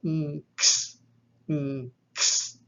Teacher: Just a slight aspiration there. A yama followed by kasi is going to be an ng followed by a ks. It's a nks, nks, as nks in thanks, nks. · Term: nasal yama